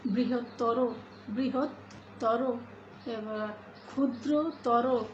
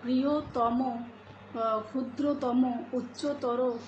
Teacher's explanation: তর এবং তম যে শব্দগুলোতে রয়েছে সেই শব্দের শেষের অ ওয়ের মতো উচ্চারিত হবে